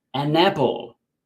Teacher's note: You can say an apple with a space, but normally when we're speaking, especially quickly, an apple sounds like one word